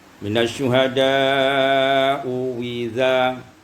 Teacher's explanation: Wali Ibnu Katsir wajhan, ada dua wajah, minat thayyibah, dari thayyibah, yaitu membacakannya, ya, wajhan, yaitu menukarkan hamzah kedua dengan waw yang maksurah